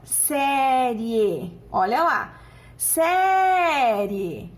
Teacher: eu tenho uma semivogal com uma vogal certo esse é o ditongo crescente